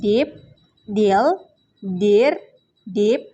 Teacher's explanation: voice alveolar stop sound da